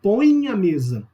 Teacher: Você percebe que o nariz até vibra a hora que você fala isso. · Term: Ditongo nasal